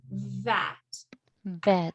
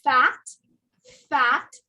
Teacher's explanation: all it is is that one has a vibration and the other one does not have a vibration even though they sound similar they the difference is one comes from the throat and you